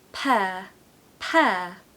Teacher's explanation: it's just like the word air like when you breathe air there's no r on the end